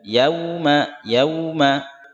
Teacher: Di sini dibaca u, yauma, bukan o ya. Yauma salah.